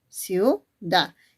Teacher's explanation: la vocal I que es cerrada y la vocal U que también es cerrada y son diferentes, por eso a esto le vas a llamar diptongo de tipo homogéneo.